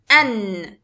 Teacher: Noon comes from the tip of the tongue and what lies opposite to it of the gums of the 2 top front incisors, slightly beneath the articulation points of the Laam.